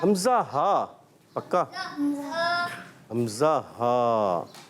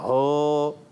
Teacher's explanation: حلق کے نیچے والے حصے سے ادا ہوتے ہیں 2 حروف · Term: حمزہ اور ہا